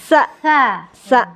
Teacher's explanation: Ujung lidah sa angin. Jangan ada suara gitu, jangan.